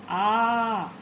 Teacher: विवृत, जिन स्वरों का उच्चारण में मुख पूरा खुलता है, हमारा मुंह पूरा खुलता है।